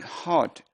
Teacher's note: our word hot is also a low back vowel